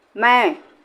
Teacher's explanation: तो वायु जो है ज़्यादा से ज़्यादा मुंह से निकलती है, थोड़ी जो है नाक से निकलती है, थोड़ी निकलती है, ज़्यादा नहीं निकलती। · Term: अनुनासिक